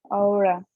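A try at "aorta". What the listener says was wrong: Yes, great.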